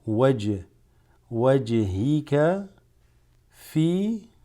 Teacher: this jim is a letter that creates qalqala, so you say it with wajhika fi.